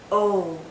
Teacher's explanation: Our lips are very rounded, but it's more open. O. Think of the letter O.